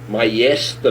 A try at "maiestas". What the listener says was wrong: Maiestas é S final, tem S final, maiestas. Não podemos fazer que nem os deputados lá que não pronunciam o S final, né?